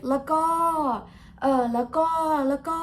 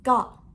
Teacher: short sound with falling tone